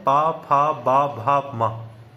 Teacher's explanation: अब प फ इनको उच्चारण करते समय हमारे ओष्ठ एक दूसरे को स्पर्श करते हैं। प भ म तो ओठ जब स्पर्श कर रहे हैं ओठ कार्य कर रहे हैं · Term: प वर्ग